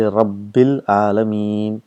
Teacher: you got hamzatul wasl and the lam, so both are made silent